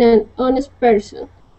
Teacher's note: The H at the beginning of honest is silent.